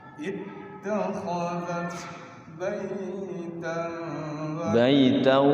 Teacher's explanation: Jadi dengungnya dengung waw bunyi baitau. Masuk ke waw. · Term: idgham bi gunnah